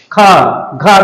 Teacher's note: इसमें हकार जैसी एक ध्वनि आती है, ख घ, देखिए हा आ रहा है कि नहीं। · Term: महाप्राण